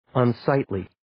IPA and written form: ən'saɪtliː (Unsightly)